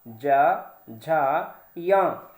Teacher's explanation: तो ये पांच के पांचों अक्षर जब भी आप कहोगे, उच्चारण करोगे, तो आपके जबान का हिस्सा और हवा जा करके आपके ऊपर तालु में टच होती है, जो जबड़े का खाली वाला हिस्सा है। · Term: तालव्य वर्ण